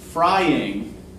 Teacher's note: it's two syllables first stressed second unstressed it's an example of what's called a trochee right the trophy